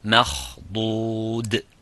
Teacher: So the ميم has to remain empty mouth, but the خا and the ضاد is full mouth. مَخْضُود. And the dal remains also muraqqaq, empty mouth.